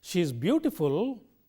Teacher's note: a falling Rising tone conveys implied meaning a reservation of statement made by the speaker